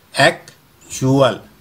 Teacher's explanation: बड़ा उ और छोटा उ के मध्य का साउंड